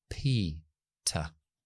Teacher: cuando estoy en la P y la T, desactivo la voz.